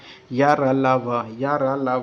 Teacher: स्पर्श तो होगा लेकिन पूर्णतः स्पर्श नहीं होगा, वह अंतस्थ व्यंजन कहलाएंगे। ये आधे स्वर भी कहलाए जाते हैं, अर्ध स्वर भी बोलते हैं।